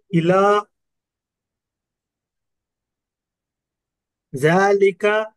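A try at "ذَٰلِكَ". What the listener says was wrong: जाल की जबान थोड़ा बाहर निकालिए, जबान की नोक जबातों के बाहर निकालिए।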